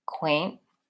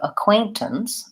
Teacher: So the stress is on the middle syllable quaint, and the first and last syllables are short.